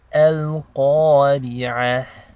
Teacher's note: we're ending on a ta marbuta, so we're making the ha sound. So it's as if you're ending on a ha sakina.